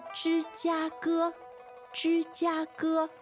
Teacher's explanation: Wow, three first tones.